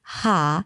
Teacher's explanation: Notice it sounds more like an ah sound than an o.